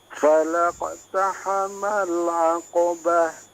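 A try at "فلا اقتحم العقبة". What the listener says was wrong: Iya, afwan, di sini qalqalah yang dipantulkan ya, falaqo. Qalqalahnya juga ikut menebal ya. Jangan tidak hanya memantul tapi ikut menebal karena qaf juga huruf tebal. Falaqo, falaqo ya.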